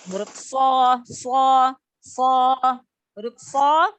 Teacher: makhorijul huruf shad, itu keluar dari ujung lidah yang hampir bertemu dengan gigi seri bawah. So, huruf so adalah huruf isti'la, ya, huruf tebal, ya, salah satu huruf tebal, huruf isti'la, ya.